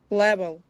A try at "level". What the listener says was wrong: Yeah, that's good.